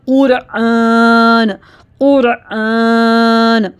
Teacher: قاف اور را دونوں جو ہے ہیوی ساؤنڈ میں پڑھے جا رہے ہیں، قرآن۔ دوبارہ سے پڑھیے، قرآن، قرآن۔